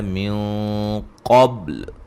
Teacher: یہاں نون ساکن کا موٹا اخفا ہے · قاف کو موٹا، با پہ قلقلہ، جب وقف کریں گے لام کو بھی ساکن کریں گے، پیچھے با کو ہلا کے پڑھیں گے.